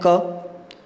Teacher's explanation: ककार है वो कंठ से उत्पन्न होता है